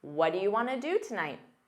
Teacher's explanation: what do you becomes Whata in fast speech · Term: what'ya